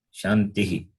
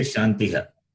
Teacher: There is no word following. Therefore, Shanti ending with the sound E followed by the visarga becomes Ihi. Shantihi. We don't say Shantiha.